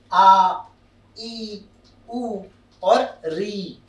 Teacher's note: दीर्घ स्वर वे स्वर हैं जिन्हें बोलने में ह्रस्व वर्णों से थोड़ा अधिक समय लगता है और ये 2 मात्राओं से मिलकर बनते हैं